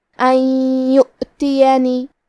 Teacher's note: کلمت یؤتینی میں واو پہ حمزہ ہے تو ہمیں حمزہ کو ظاہر کرنا ہے اور اس پہ جزم ہے تو ہم جزم کو بھی ظاہر کریں گے اور حمزہ کی ادائیگی حلق کے نیچے والے حصے سے ہے. آخری میں نون کے نیچے زیر ہے تو ہم حرف النون کو صرف زیر سے پڑھیں گے. · کلمت یؤتینی یا حروف الادغام بغنہ میں سے ہے تو ہم یہ حکم کو غنہ اور تشدید کے ساتھ ادا کریں گے